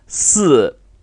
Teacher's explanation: pronounce it in the sharp descending fourth tone